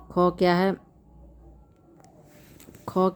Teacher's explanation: ख क्या है? अघोष महाप्राण है।